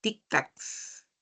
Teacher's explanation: Si esta palabra aguda termina en doble consonante, mira cómo estas palabras terminan en doble consonante. Son agudas porque la mayor fuerza de voz está en la última sílaba.